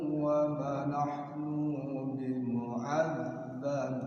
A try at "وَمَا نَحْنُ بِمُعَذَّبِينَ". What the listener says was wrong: Iya. Nu-nya pendek. Wa ma nahnu bimu'az langsung. bimu'azzabin.